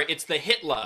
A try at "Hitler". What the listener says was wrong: No hard R.